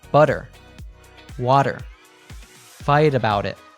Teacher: In American English, when a T is between 2 vowel sounds, it usually becomes a tap T, which sounds like a soft D.